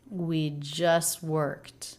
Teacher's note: Now here we have an ST cluster, and just like earlier with the CT cluster, T's are usually pronounced in this cluster, but when the next word begins with a consonant, we often drop the T, and this time he does